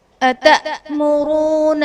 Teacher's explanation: أتأمرون میں حمزہ ساکنہ ہے، جھٹکا دے کر پڑھیں گے۔